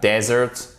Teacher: avec l'accentuation sur la première syllabe, dessert, c'est le désert. Dessert, accentuation sur la seconde syllabe et en plus, ici le E, il se prononce comme un E.